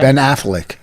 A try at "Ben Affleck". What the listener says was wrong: Ben Affleck. You're saying flick. I'm saying fleck. It'd be like saying Viss or Voss. You want people to say Rich Viss?